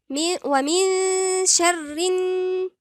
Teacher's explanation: النون المشددة والميم المشددة هنقول عليهم غنة مشدد، يبقى هنا في غنة نقف عليها شوية. لما أقول غنة يعني في غنة مقدار حركتين، ما نجيش نغنها بسرعة. ومن شر يبقى لازم نديها حقها مقدار حركتين.